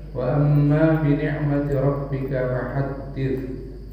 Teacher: Mimnya tasdid gunnah, hukumnya gunnah ditahan.